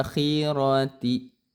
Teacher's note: a-nya panjang 2 harokat mad tabi'i.